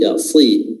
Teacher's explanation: Namun karena dia berharakat kasrah, maka ketebalannya berkurang. Jangan disamakan kalau dia berharakat fathah. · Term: huruf sad